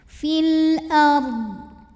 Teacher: huruf ro sukun disebut dengan ro yang dibaca secara tafkhim sebab sebelumnya didahului baris fathah maka dibacanya tebal filard huruf dad harus tetap terbaca ya fil ARD tapi jangan